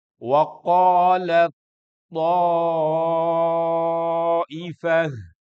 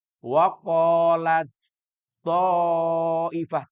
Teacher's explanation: Makhraj ta itu melebur kepada makhrajnya th. Enggak boleh dibaca waqolat th. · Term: idgham mutajanisain